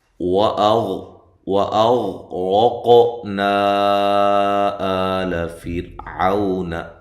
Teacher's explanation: غین کو ہلانا نہیں ہے، اور حمزہ کو تحقیق کے ساتھ، را کو موٹا، قاف پہ قلقلہ۔ نا پہ جو مد ہے یہ مد جائز ہے۔